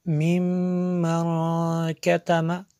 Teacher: میم شدد ہے اس لیے یہاں پہ غنہ کیا، اور آگے نون ساکن ہے، اس کے بعد تا حروف اخفا میں سے یہاں پہ اخفا ہوگا۔